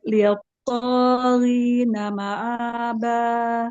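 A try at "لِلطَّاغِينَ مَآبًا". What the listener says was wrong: Litto, langsung. Litto. litto. Enggak ada, langsung to. Syiddah. Litto. Karena to itu dia punya sifat jahar, tertahan nafas, syiddah, tertahan suara, ya. Jadi jangan ada aliran suaranya, langsung litto, litto, ya. Ya, to itu punya sifat isti'la, punya sifat itbaq ya.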